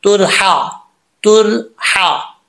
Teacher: इस हा का तालुक सीने की तरफ नहीं है हल की तरफ है इसको बारीक पढ़ा जाएगा भारी साउंड के साथ नहीं पढ़ेंगे तुरहा तुरहा मन वाव मद्दा